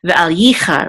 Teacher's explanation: The accent is on yi, because this is the accent mark right here.